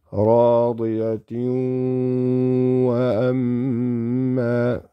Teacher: This is going to be idgham with ghunna. The waw came after kasrataini.